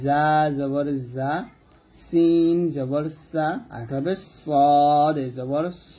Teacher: জিহ্বার আগার সামনে নিচের দাঁতের মাঝখানে লাগিয়ে এই তিনটা হরফ উচ্চারণ করব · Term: জা সিন সদ